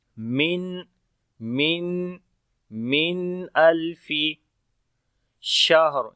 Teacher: شین کے اندر صفت تفشی ہوگی، ہا کے اندر صفت ہمس ہے